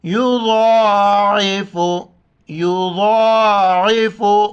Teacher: واللہ یضاعف، ضاد موٹے الفاظ میں سے ہیں، اس کے اوپر کڑا زبر ہے، ایک الف کی مقدار اوپر کھینچنا ہے اور عین کو ہم گلے سے ادا کریں گے.